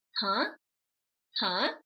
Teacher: after pronouncing the first rising sound huh you are at the high pitch point that you need to reset so your second sound can start low and have room to go up again